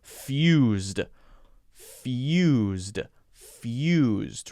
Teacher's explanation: the tough sound is the Y sound after the F. There's a little yeah.